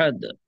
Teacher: আহাদ, দাল সাকিন কলকলা হবে